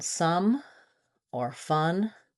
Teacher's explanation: using the schwa vowel, like in some or fun, which is a little bit more flat, more central vowel, because your jaw is about the same amount of open.